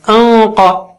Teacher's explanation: قاف اونچا ہے تو نون ساکینہ بھی اونچا ہو جائے گا